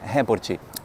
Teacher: Além de mudar a sílaba tônica, a gente acrescenta esse i no final, para ficar bem abrasileirado